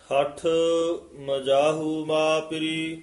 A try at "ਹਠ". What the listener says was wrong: ਇਹ ਹੱਠ ਪੋਲਾ ਹੀ ਬੋਲਣਾ, ਹੱਠ ਮਜਾਹੂ ਮਾ ਪਿਰੀ। ਜਿਹੜਾ ਪਾਠ ਹੈ ਨਾ ਇਹ ਸੰਬੰਧਕ ਪਾਠ ਹੈ, ਇੱਥੇ ਮਾ ਪਿਰੀ ਨੀ ਕਹਿਣਾ, ਬਿੰਦੀ ਤੋਂ ਰਹਿਤ ਹੀ, ਨਾਸਕੀ ਉਚਾਰਨ ਤੋਂ ਰਹਿਤ ਬੋਲਣਾ ਮਾ ਪਿਰੀ।